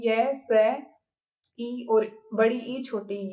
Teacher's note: च वर्ग और साथ में य स ई और बड़ी ई छोटी ई ये सब किससे बोले जाते हैं तालू से बोले जाते हैं